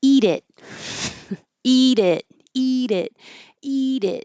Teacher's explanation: So if you have trouble finding the it position, which a lot of languages do because it's not as common as e, think you're being bossy and tell somebody eat it, eat it, eat it, eat it. It's high, low, high, low. And that could help you find the position.